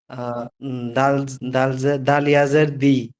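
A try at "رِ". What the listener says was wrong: এটা দাল না, এটা র। থেকে বলছি এরকম উপর দিকে থাকবে। উপর দিকে দাল। উপরতলা উঠে আছে।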